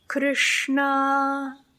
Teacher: chna captures everyone's Hearts yes Krishna you mean Krishna yeah so with Krishna the r is the vowel the sh is the hissing sound and the N is the nasal sound and all three of those sounds are in that position so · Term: third position sound